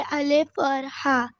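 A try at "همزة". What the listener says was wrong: हमजा, हमजा हा बेटा, ओके, अलिफ नहीं, हमजा हा।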